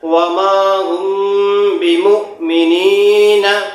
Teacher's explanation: حمزہ پہ جزم لگا رہے گا تو اس کو حمزہ ساکنہ کہتے ہیں. اس میں پڑھنے میں جھٹکا ہوتا ہے